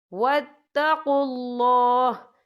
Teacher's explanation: یہاں اللہ کا نام پر پڑھا جائے گا، کیونکہ اللہ کے نام سے پہلے پیش ہے